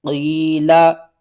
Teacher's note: یا ساکن سے پہلے زیر ہے، حروف مدہ ہے، ایک الف کے برابر کھینچ کر پڑھیں گے۔